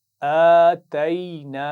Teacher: بعد الف ہے، تو ان کو ملا کر پڑھیں گے تو نون کی آواز زبر والی ہم کھینچ دیں گے الف مدہ کی وجہ سے